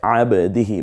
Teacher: বাটা কলকলা হবে, বা জিম দাল তো কফ